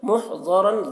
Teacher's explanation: اور یہاں پر تنوین کے بعد حروف یومین میں سے میم ہے تو تنوین کو میم سے ملا کر غنہ کے ساتھ پڑھیں گے، اس کو ادغام ناقص کہتے ہیں. محضرن، ضاد کو پر پڑھیں گے، ضاد حروف مستعلیہ میں سے ہے. را کو پر پڑھیں گے، را کے اوپر دو زبر کی تنوین ہے اور یہاں پر ملا کر پڑھیں گے.